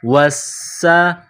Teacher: سین میں سیٹی کی آواز پیدا کریں گے، سین کو پتلا کریں گے، سین کے اوپر 3 دندانے والی چیز تشدید ہے، سین مشدد ہے، تو واو اور سین کو ملائیں گے تشدید کی وجہ سے، واو سین زبر وس، سین زبر سا، وسا، واو سین زبر وس، سین زبر سا، وسا۔